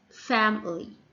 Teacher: the stress falls on the first syllable that's why the letter i here and the third syllable can be sound like the schwa